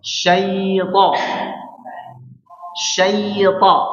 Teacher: Nah, perhatikan bibirnya jangan sampai mengarah kepada wawu, ya. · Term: lin